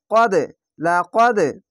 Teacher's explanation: লা কদে কলকলাটি ধাক্কা মেরে নিচে সাউন্ড আসবে